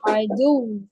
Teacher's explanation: وقف کی صورت میں آپ کے ہونٹ جو ہے وہ گول رہیں گے. عائدو, نبر کریں گے ایک تو یہاں پہ.